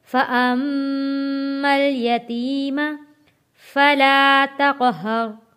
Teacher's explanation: میم تشدید والا ہے، غنہ ادا کریں گے